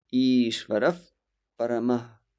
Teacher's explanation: we will transform the Visarga into F. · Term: Upadmaniya